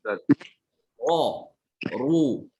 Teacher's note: Kalau ro yang tebal itu ini pangkalnya tuh naik dia. Ini pangkal lidah itu naik ke apa? Ke arah langitan mulut. Makanya lihat ini rongga mulut jadi menyempit ya.